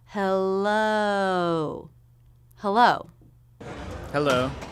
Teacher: you round your lips for the second half hello hello hello a little bit of lip rounding here for the second half of the oh diphthong · we have the o as in no diphthong drop your jaw for the first half of the sound and make sure you round your lips for the second half hello hello hello a little bit of lip rounding here for